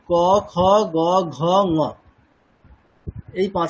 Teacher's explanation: বর্গের দ্বিতীয় এবং চতুর্থ বর্ণগুলো উচ্চারণ করতে আমাদের একটু মনে হচ্ছে যে শক্তি বেশি লাগছে মানে আমাদের একটু মানে প্রেসারটা বেশি দিতে হচ্ছে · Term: মহাপ্রাণ